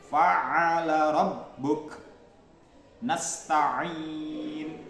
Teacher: ain dan ha. Ini keluar dari tenggorokan tengah